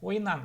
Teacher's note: Потому что заканчивается на гласное, пристегиваем гласное ан. Ну, я обращаю внимание, твердое ан, не ен, да.